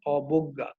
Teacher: এই জয়ের সঙ্গে কিন্তু একটি ইও ছিল, কিন্তু এই ইওটি কিন্তু এখানে আর উচ্চারিত হচ্ছে না, যেহেতু ইও একটি নাসিক্য ধ্বনি এবং যেহেতু এটি এখন আর এই বর্ণে উচ্চারিত, এই শব্দে উচ্চারিত হচ্ছে না, এর জন্য কিন্তু এখানে চন্দ্রবিন্দুটি চলে আসলো।